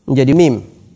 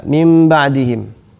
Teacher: Nah, inilah iqlab, merubah nun menjadi mim apabila bertemu dengan ba. Mim ba'dihim.